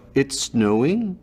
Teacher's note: Canadians have this rise at the end, so every statement sounds like a question. So even if it's snowing, obviously they'll go, it's snowing? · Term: Canadian rise